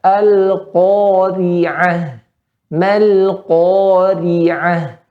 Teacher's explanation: Pada rohnya ketika kasroh maka ditipiskan.